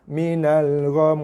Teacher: Okey, so mi dah tak bunyi. Kerana kita matikan mim kerana wakaf. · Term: dengung